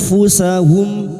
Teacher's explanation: samarkan bunyi nun sukun dan mendengung selama tiga harakat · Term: ikfa hakik